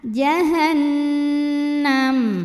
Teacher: nun dihukumi dengan ghunnah musyadadah atau Nun musadadah atau wajibulhunnah ya karena nun-nya bertasydid maka cara bacanya adalah dengungkan bunyi n-nya tahan